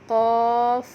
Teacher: قاف تالو اور زبان کا پچھلا حصہ آپس میں مل رہے ہیں